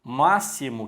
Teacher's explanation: o x na palavra máximo que também já vimos ele tem som de ss